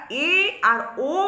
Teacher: উচ্চারণ করছি তখন মুখ বিবরের মধ্যে দুই তৃতীয়াংশ শূন্যস্থান ভরে থাকছে তাই এদের বলছে অর্ধ সংবৃত স্বর